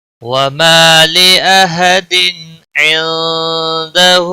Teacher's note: تنوین کے اوپر اظہار ہوگا، گنہ نہیں ہوگا. اس اظہار کو اظہار حلقی کہتے ہیں.